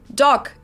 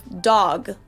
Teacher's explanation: just pronounce them more harshly than you usually would and devoice them